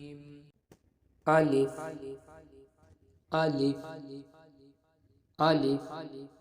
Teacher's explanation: الف کے مخرج کی ادائیگی حلق کے نیچے والے حصے سے ہوتی ہے